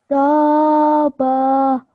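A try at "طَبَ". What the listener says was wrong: But don't prolong the ba. It doesn't have alif of prolongation. It doesn't have alif madda that comes with it. Just the fatha, just the line on top means just for 1 second, like a drum when you're drumming something, like ba, like this. Ba. Ba.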